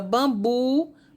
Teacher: Bambu é uma palavra oxítona porque bu é a sílaba mais forte, mas ela não vai ser acentuada.